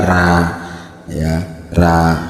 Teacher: kalau orang Madura, Sulawesi biasanya ro itu dibaca ra